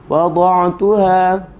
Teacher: huruf ain baca macam ada spring. Sebab huruf yang bersifat dengan bainiyah berada di tengah antara pegang dengan lepas.